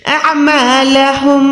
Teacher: عین حلق کے درمیان سے ادا کریں گے